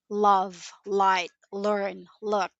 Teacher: It usually appears at the beginning of words or beginning of syllables. Your tongue touches the top of your mouth, alveolar ridge, and the sound feels bright and forward. Examples: love, light, learn, look.